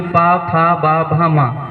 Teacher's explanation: जब भी हम इन वर्णों को बोलते हैं तो हमारे होठ दोनों आपस में मिल जाते हैं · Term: ओष्ठ वर्ग